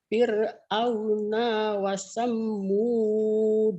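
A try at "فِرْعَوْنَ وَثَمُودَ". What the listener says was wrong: Kenapa dibikin itu Fir'auna wasamud? Nggak ada tasdidnya. Didatarin saja. Jangan didobel-dobel. Datar aja ini nggak ada pendobel. Kalau ada pendobel, ada tasdid baru ya Bu ya.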